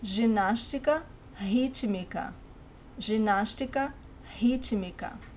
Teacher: The R, when it's the first letter of the word, in Brazilian Portuguese it sounds like the H in English.